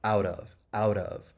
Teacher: that final T in out, you're going to hear me say it as a flap T. And then we can link it with the vowel sound in of out of.